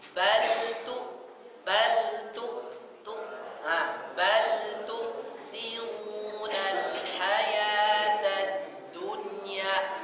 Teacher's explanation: Di tu-nya dimonyongkan, tapi hamzahnya balik bibirnya. Tu siru, bukan tu. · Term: hamzah sukun